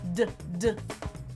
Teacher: It's the same as /t/, but we engage our vocal folds for vibration. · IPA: /d/